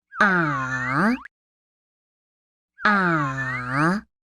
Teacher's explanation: When we make this sound, that is the sound for the third tone. It starts normal and then goes low and then rises up again.